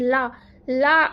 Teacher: ला को पार्श्विक वर्ड माना जाता है कि ला अगर हम ला का उच्चारण करते हैं तो हमारी जीभ की जो ये अगला नोक होता है, पार्श्व होता है, ये हमारे तालु को टच करता है, तो इसे पार्श्विक इसीलिए कहते हैं।